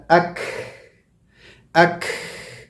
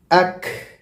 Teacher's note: جیسے میں بولا اک اک، دیکھیں ہوا جا رہی ہے. آواز تو رک گئی میری کاف کی، لیکن ہوا مستقل جا رہی ہے، جاری ہے. تو continuation of breath but stopping of the sound.